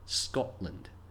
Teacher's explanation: Now here, we often drop our T's when speaking quickly, however, we don't say Scotland. There's a pause where the T would be Scotland. The O and L don't run together smoothly like in holiday. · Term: glottal stop